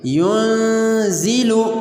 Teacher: Next مثال ہماری نون ساکن کی ہے لیکن اس کے بعد حرف اخفاء زا آ رہی ہے، اس لیے یہاں پر بھی ہم نون ساکن میں اخفاء کریں گے اور نون کی آواز کو ہم ناک میں لے جا کر چھپائیں گے اور اس کو ایسے پڑھیں گے ینزل۔